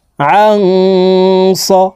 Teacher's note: এই নুন সাকিনকে নাকের ভিতরে লুকাইয়া গুন্নার সহিত পড়ব